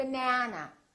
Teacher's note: has three syllables let's take a look so we have bana this second syllable is stressed that means this vowel is going to be much longer